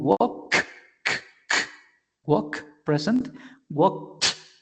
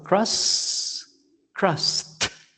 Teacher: If it doesn't generate vibration, the ed ending of the verb is going to sound like t.